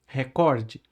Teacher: O correto da palavra, a sílaba tônica da palavra é no cor.